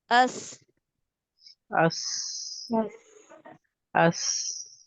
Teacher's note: سفیر مطلب یعنی پرندے کی تیز سیٹی جیسی آواز. اس کے لیے کیا چیز چاہیے ہوتی ہے کہ ہمیں ایک تنگ راستہ چاہیے ہوتا ہے جس میں سے یہ شدت کے ساتھ یہ جو تیز آواز ہے، جو سیٹی کی آواز ہے، وہ آرام سے نکل سکے.